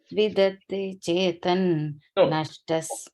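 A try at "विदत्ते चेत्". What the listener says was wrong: No in. Just vidatte chet it.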